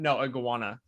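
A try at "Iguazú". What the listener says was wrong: No, say iguana, but with a U. Iguazu.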